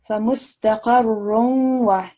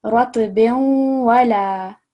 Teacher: slightly hear the nasal sound coming through from the tanveen